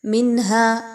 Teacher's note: نون ساکن کے بعد ہا کا حرف آ رہا ہے، حروف حلقی میں سے ہا ہے، تو یہاں پر آپ نے اظہار کرنا ہے، کسی طرح کا غنہ نہیں ہونا چاہیے۔